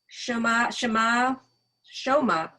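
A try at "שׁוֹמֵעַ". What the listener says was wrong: No, get the vowels right. There's a vowel under the mem. And then the vowel with the ayin.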